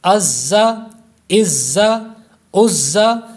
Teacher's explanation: یہ حروف صفیریہ ہے، اس میں سیٹی کی آواز بھی پیدا ہوگی، سختی سے پڑھیں گے